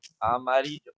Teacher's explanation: Eh, se como comentamos es una palabra grave porque la ari es la sílaba que se la más fuerte y es grave porque es la penúltima, o sea, la sílaba tónica es la penúltima